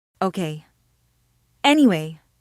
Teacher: you say it with a clear downward intonation. It breaks the conversational rhythm.